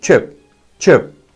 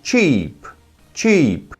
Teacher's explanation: curto e com som de é fraco